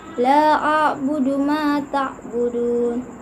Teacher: Ta'budun dibaca panjang 2, 4 sampai 6 harakat ketika berhenti di akhir ayat dan hukum bacanya mad arid lis sukun.